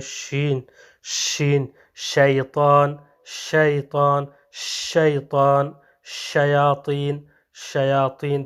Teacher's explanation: حرف شین کو ادا کرتے وقت منہ سے جو سانس یا ہوا نکلتی ہے یہ کیا ہے منتشر ہو جاتی ہے، تو اس لیے حرف شین کے ساتھ جو ہے یہ صفت تفشی جو ہے یہ مختص ہے، جیسے شین شین، شیطان شیطان، شیطان، شیاطین شیاطین، تو اس طرح یہ منتشر ہو جاتی ہے جو سانس یا ہوا منہ سے نکلتی ہے اس حرف کو ادا کرتے وقت۔